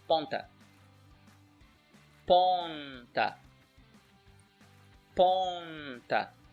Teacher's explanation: it's a nasal sound with a little n at the end.